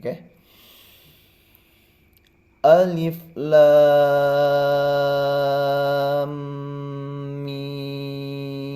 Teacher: ada tiga huruf yang sama-sama panjangnya enam harokat maka dipersiapkan juga nafasnya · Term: mad lazim Harfi mutsaqol